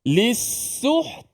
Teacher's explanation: Jadi bila kita lisuh, tekan suara kita, stopkan suara kita, putuskan suara kita pada makhraj ta di situ. Barulah kita lepas lidah kita ada angin. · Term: ta yang mati